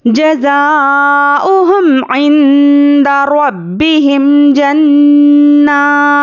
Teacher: ज़ा अलिफ ज़बर ऊपर मद मुत्तसिल का कायदा है, यहाँ पर हमें क्या करना है, 5 से 6 अलिफ के बराबर खींचकर पढ़ेंगे